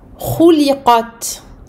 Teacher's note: Kha mufakhama, lam muraqqaqa. Qaf mufakhama, ta muraqqaqa. On monte, on descend, on monte, on descend.